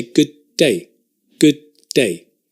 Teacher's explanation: we drop the d